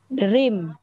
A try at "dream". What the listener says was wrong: vẫn đọc cái chữ đầu tiên là thành đờ rồi. Thì cái đấy là không đúng. Thì phải kết chữ D và R để thành một.